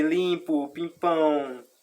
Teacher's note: Percebe que quando a gente fala algum dígrafo vocálico, percebe que ele sempre vai passar pelo nariz.